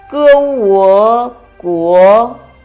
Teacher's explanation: a combination of ge and wo. Second tone. 歌我国 it means country.